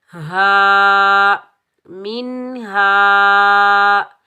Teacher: हा के ऊपर ज़बर आगे अलिफ खाली है, ये अलिफ मद्दा, इसको हम एक अलिफ की मिकदार खींच कर अदा करेंगे और इस हा को सीने से अदा करेंगे